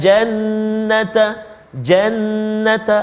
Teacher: ada sabdu dekat atas nun tu, kena beri hak dia, iaitu wajibul gunnah, 2 harakat. Jannata, jannata, jangan cepat kat situ, kena beri 2 harakat.